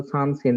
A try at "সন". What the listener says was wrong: সন শব্দ যাব সন হবে, সান হবে না তো।